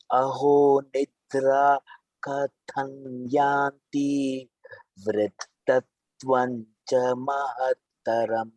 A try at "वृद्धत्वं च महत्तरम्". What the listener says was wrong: Vriddha, dha Mahaprana.